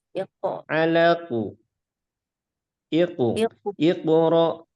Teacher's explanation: yaitu qaf ketika sukun, pantulannya tebal.